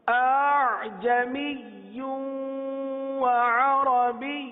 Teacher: لیکن دوسرے حمزہ کو نرم کر دینا، یعنی اس کی تحقیق ختم کر دینی. تحقیق ختم ہو گئی، تحقیق جب ختم ہو گئی تو اس کے اندر نرمی آ گئی. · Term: تسہیل